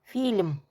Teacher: L yumuşalır. Çünkü L'dan sonra məhki znak var.